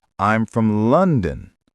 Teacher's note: I'm from London. The stress is on lun.